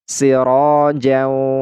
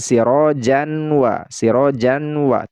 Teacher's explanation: Nah, suara tanwinnya ini tidak terdengar lagi karena dia masuk kepada huruf waw. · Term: idgham bi gunnah